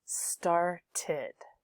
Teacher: with started, you've got an extra syllable there, and it ends in id. And this id is pronounced like silver pin, id.